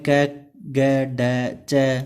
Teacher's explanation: इस दृष्टि से अलप प्राण जिन ध्वनियों के उच्चारण में श्वास कम बल लगाना पड़ता है उन्हें अलप प्राण कहा जाता है। जिसमें हवा की कम जरूरत रहती है बोलने में, उनको क्या बोलते हैं, अलप प्राण